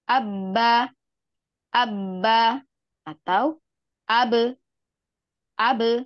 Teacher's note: suara Ba Itu keluarnya dari kedua bibir